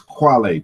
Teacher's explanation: this K in the initial position becomes rounded